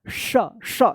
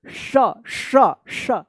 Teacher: जीभ जो है ना तालु में जाकर सटता है तब आवाज निकलता है श श। जीभ को जो है ना तालु में, ये जीभ है इसको तालु में लाकर सटाइएगा, तालव्य। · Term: तालव्य श